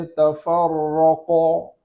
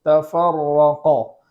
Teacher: اور آگے والا حرف ہے قاف، تو قاف کو پور کرنے میں اس بات کا خیال کریں گے کہ ہونٹوں کا سہارا نہ ہو